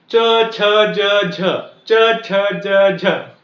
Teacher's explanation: तालव्य वाले उच्चार जे आहेत ते य युक्त आहेत